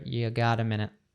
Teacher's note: So we have that American T, right? You gets reduced to a schwa sound, ya, and it kind of all connects together.